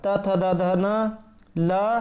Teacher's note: ये सभी जो है वर्ण दंत के द्वारा बोले जाते हैं, इसलिए से इन्हें जो है दंत्य वर्ण कहा जाता है।